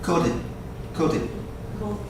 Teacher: And this D actually is going to sound almost like a T sound.